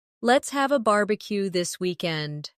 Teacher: stress barbecue and weekend. So, it sounds lively and friendly.